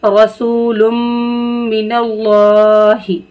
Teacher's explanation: अल्लाह के लाम को मोटा करके पढ़ेंगे। ठीक है, और इसको खींचेंगे भी क्योंकि ऊपर क्या लगा हुआ है?